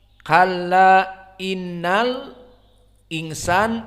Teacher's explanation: jumhur seperti biasa membaca al-insan dengan idharu al-hamzah